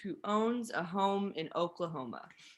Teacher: so we have the oh and that's like a little longer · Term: longer o sound